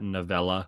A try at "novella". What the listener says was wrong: Don't say it like Nutella. Don't do that. You're just putting so much emphasis on the Ella.